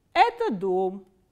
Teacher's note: pronounce this sentence at the dome so what happens is now we start from a middle medium pitch and it goes down towards the last stressed syllable